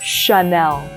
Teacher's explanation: if anything in French has a CH, instead of pronouncing it in English like cha, for example, channel, we would pronounce it as a sh